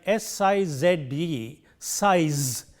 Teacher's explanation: And we have to make sure that the voicing is important when we produce this word. In the initial position it is voiceless, and in the final position it is voiced.